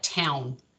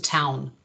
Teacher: when the following segment is a nasal, we find that that diphthong tends to be produced farther forward in the mouth and a little higher. So it tends to come out more like town as opposed to town.